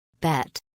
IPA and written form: bæt (bat)